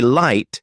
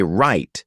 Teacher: when you say light, your tongue touches the top of your mouth near your teeth. But when you say right, it curls back slightly